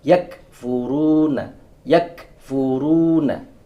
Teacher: Yakfuruna, yakfuruna, tidak boleh yak. Kalau dia yak, berarti ada aliran suara di sana, sifat syiddahnya hilang. Harusnya syiddah dulu, yak, kemudian hams, k. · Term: huruf kaf